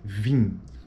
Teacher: esse i é uma vogal tônica nasal em final de palavra